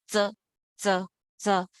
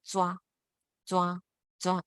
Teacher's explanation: you can feel your tongue touching the top of your teeth, the front, your front teeth, the back of your front teeth